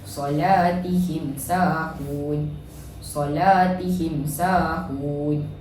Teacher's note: bunyi mim dibaca secara jelas tanpa dengung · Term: izhar syafawi